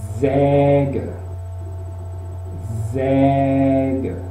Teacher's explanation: Es una E abierta, hay que abrir la boca